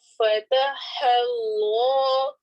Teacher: اتحدثونهم بما الف مدہ فتح اللہ اور اس میں جلالہ کے لام سے پہلے والے لفظ کے آخر میں فتح آ رہی ہے, ہا کے اوپر زبر ہے اس لیے ہم اس اللہ کے لام کو موٹا پڑھیں گے